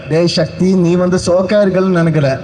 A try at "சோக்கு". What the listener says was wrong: சோப் இல்ல brother, சோக்கு. சோப் இல்ல, சோக்கு.